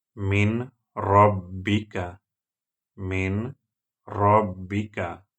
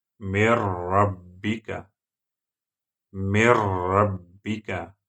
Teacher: For example, when ra comes after noon sukun, min rabbika, min rabbika, you have to add noon sukun into ra. It will be mir rabbika, mir rabbika. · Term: idgham without Ghunnah